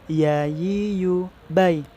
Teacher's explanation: Rasakan saat kita melafazkan huruf ya, itu yang terasa itu di tengah-tengah lidah kita.